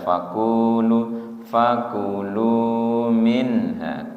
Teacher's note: faquulu minha kunya pendek lunya yang panjang